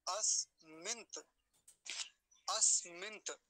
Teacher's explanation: अब देखिए नकार भी आधा है और तकार भी आधा है। पूरा नहीं करेंगे किसी को भी